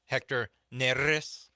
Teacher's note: say Neris with a rolled R